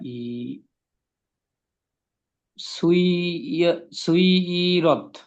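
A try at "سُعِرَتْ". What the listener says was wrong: আচ্ছা, এটা হবে সুইগিরত। একদম সেম উচ্চারণ এরকম হবে, একটু পার্থক্য হবে। এটা সিন আইন পেশ সুই হবে না, সু হবে। সু ইরত। সু ইরত। আইন আছে না এখানে, ইয়া নেই। সুই মানে ইয়া থাকলে সুই হতো, এখানে আইন আছে। সু ইরত পড়েন। হ্যাঁ, সু ইরত।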